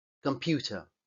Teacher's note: cuando digo esta palabra, computer, al final esa E prácticamente no suena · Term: schwa